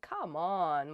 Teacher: you can also use it with downward intonation as in come on when you feel upset about something